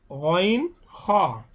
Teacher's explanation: কণ্ঠনালীর শেষ ভাগ হইতে গইন হ, অর্থাৎ আমাদের মুখে খুব নিকটস্থ কণ্ঠনালীর যে স্থানটা সেখান থেকে উচ্চারণ হবে গইন হ